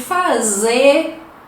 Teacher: eles têm uma característica de enfatizar, né? Então dá aquela ênfase na última sílaba, na última vogal.